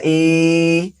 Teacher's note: Standing kasra pronounced just like simple kasra but a little bit long.